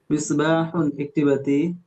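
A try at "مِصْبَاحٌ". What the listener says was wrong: মিসবাহুন একটু সোয়াদ, সোয়াদ আর সিনের পার্থক্য তো আপনারা জানেন, একটু মোটা করে পড়তে হবে। সিন আর সোয়াদের মধ্যে পার্থক্য হবে, সেই হবে সোয়াদ।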